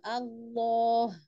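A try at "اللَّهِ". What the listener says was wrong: enggak pakai bantuan bibir. Allah.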